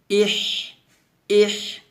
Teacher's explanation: হামজা হাজের ইহ, ইহ, ইহ, কলকের মাঝখান থেকে একটা শব্দ বের হবে, মানে চিকন একটা বাতাস বের হবে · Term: হামস